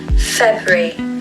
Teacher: Put the stress on the first part of the word